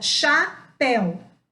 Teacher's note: O E e o U ficaram juntos numa mesma sílaba